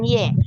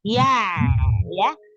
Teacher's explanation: fathah di ya-nya jangan dimiringkan. Jangan imalah.